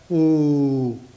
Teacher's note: Ooh. So that sound is produced as ah and it is continued as ooh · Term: aum